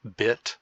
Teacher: the almost high front vowel is bit